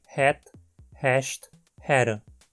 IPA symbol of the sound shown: ɛ